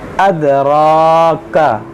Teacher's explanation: کاف پہ صرف زبر ہے تو اس کو کھینچیں گے نہیں، صرف ہم را کو کھینچیں گے